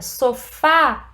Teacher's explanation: o som é aberto na vogal a receber o acento